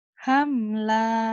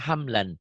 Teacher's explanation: Hamla kalau dihentikan. Kalau dibaca apa adanya hamlan.